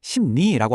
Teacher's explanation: 앞에 있는 비음 미음이나 이응 때문에 뒷따라오던 리을이 니은으로 바뀌는 현상입니다.